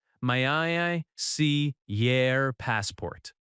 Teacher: The word your reduces to yer.